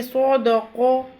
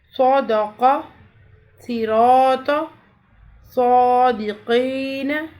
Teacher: صرف ہم زبان کو تالو کی طرف بلند کریں گے، ہونٹوں کو گول نہیں کریں گے۔